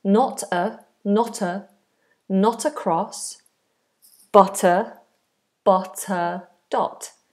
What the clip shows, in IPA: nɒt ə krɒs bʌt ə dɒt